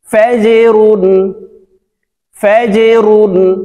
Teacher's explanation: এই জিম হরফটি নিচের দিকে ধাবিত করে কলকলা করে উচ্চারণ করতে হবে